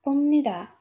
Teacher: E'tibor bergan bo'lsangiz, pomnida M tarzida talaffuz qildim. Nimaga? Chunki yana bitta qoida, PB harfimizga yana bir qoida, asosiy jihati shundaki, N harfidan oldin kelsa, PB harfimiz M tarzida o'qiladi.